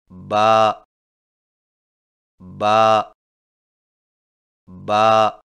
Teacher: با کی ادائیگی میں ہونٹوں کے گیلے حصے کو سختی سے ملا کر باریک آواز میں پڑھیں، یعنی با با با۔